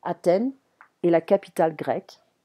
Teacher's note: we don't pronounce the TH in French, it's a T sound